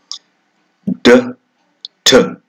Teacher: So, they are two stop sounds. And here, the stoppage is caused by the tongue against the alveolar ridge